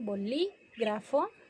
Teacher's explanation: bolígrafo, que lleva acento en la LI